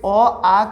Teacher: अ आ का उच्चारण स्थान बताइए तो आप कहिएगा सर कंठ होता है